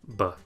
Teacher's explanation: sound which is basically the same as in english b sound you put your lips together let the pressure build up behind them and then release with some voicing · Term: ba sound